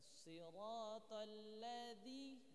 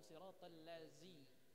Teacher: Jangan lupa sempurnakan huruf zal. Zal yang ujung lidahnya keluar sedikit.